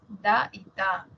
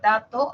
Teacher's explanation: tenemos los dentales da y ta por ejemplo la palabra dato Aparecen las dos dato Tenemos también